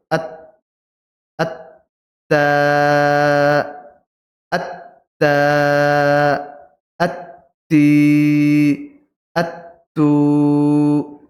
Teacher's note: আগা সামনের ওপরের দুই দাঁতের গোড়ার সাথে লাগিয়ে দুই দাঁতের গোড়ার দুই দাঁতের গোড়াতে জিহবার আগাটা লাগান লাগিয়ে উচ্চারণ করুন